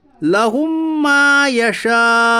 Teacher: میم ساکن کے بعد میم آیا اس لیے ادغام شفوی ہوگا, یعنی ملا کر غنہ کے ساتھ پڑھیے